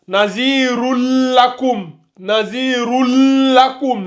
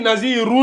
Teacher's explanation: Donc, ici, ça donne Nazirul Lakum. Mais vous appuyez un peu sur le La. Vu qu'il y a la shadda. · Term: la liaison